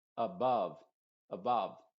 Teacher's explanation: es como si se estuviera usando la misma vocal en las dos sílabas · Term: u modificada